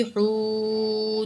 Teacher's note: ہا پیش واو حو، واو ساکن ما قبل پیش ہے، واو مد ہے، 2 کاؤنٹ کھینچ کے پڑھیں گے